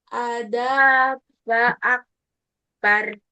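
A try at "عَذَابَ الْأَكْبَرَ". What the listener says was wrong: Adabal. Balna masuk ke lam.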